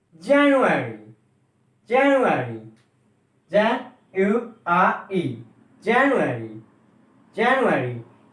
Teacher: a stress on first syllable